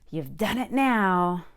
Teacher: I said you've with a short back U.